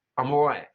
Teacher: So glottalizing that T, not saying it. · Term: glottal T